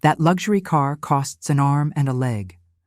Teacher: Stress arm and leg for emphasis.